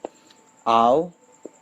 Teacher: its quirks au is the second of the non-phonemic diphthongs wherein we'll have a little raising of the tongue at the end of our production of this vowel in the high back part of the quadrilateral we also have